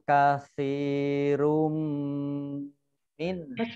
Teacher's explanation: Wadda kasirum min fa kasroh ya sukun mat tabi'i panjang 2 harokat, ra dhammah tanwin bertemu dengan huruf mim, bacaan idgham bi gunnah ya, melebur dengan mendengung